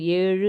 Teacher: இருக்கிற மத்த எழுத்துக்கள் ஓகேங்களா அந்த எழுத்துக்கள் வரும்போது அது முழுமையா ஒலிக்கும் இவ்வாறு ஓசை குறியாமல் ஒரு மாத்திரை அளவில் முழுமையாக ஒலிப்பதை முற்றியல் உகரம் என்பர்